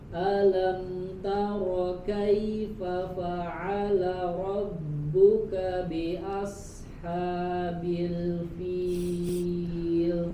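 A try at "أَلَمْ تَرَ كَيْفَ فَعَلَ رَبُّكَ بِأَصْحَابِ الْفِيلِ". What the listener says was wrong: Kurang tebal huruf shadnya. Bi asha. Ro-nya tebal. Taro. Nah, coba ulangi pada kata biasha. Ha-nya lebih jelas lagi.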